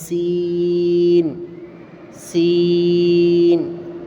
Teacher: سیٹی کی آواز نکال کر کھینچ کر پڑھنا ہے